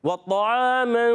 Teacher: یہاں قاعدہ ہوگا اخفا کا قاعدہ, یعنی ایک الف کا غنہ کریں گے, نون کو چھپا کر ادا کریں گے. ناک میں آواز لے جائیں گے, چھپائیں گے.